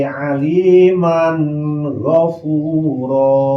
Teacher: Tanwin fathah nu aya dina mim ngaharepan gain, maka tanwin macana wajib izhar dijelaskan suara n. Izharna izhar halki lantaran gain eta huruf halak.